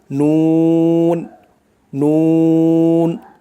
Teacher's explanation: জিহ্বার আগা তার বরাবর উপরের তালুর সঙ্গে লাগাইয়া উচ্চারণ হয় নুন নুন, মানে জিহ্বার আগা তার বরাবর উপরের তালুর সঙ্গে লাগাইয়া, উপরের তালুর সাথে লাগবে, উচ্চারণ হবে নুন।